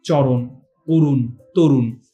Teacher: ব্যঞ্জন ধ্বনির কিছু উচ্চারণের কথায় বাংলায় অসংযুক্ত অবস্থায় মানে মোট কথা মূর্ধন্য ন এর যে উচ্চারণটা সেটা যখন অসংযুক্ত মানে যুক্ত সেটা যুক্তবর্ণ হিসেবে থাকবে না তখন আসলে এটার উচ্চারণ আর দন্তন্য এর উচ্চারণের মধ্যে কোন পার্থক্য নেই